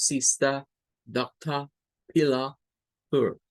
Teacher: de acuerdo al inglés británico, todas estas terminaciones tienen sonidos de schwa a la par de la R. Y la R desaparece. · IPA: /ə/